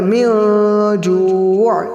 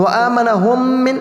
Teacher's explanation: میم ساکن کے بعد دوسری میم ہے تو وہاں پر بھی ایک الف کے برابر گننا کریں گے. ادغام شفوی ہو رہا ہے میم ساکن کا.